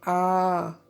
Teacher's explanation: उच्चारण में ह्रस्व स्वरों के उच्चारण से दोगुना समय लगता है और यह साथ है दीर्घ का मतलब होता है बड़ा तो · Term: दीर्घ स्वर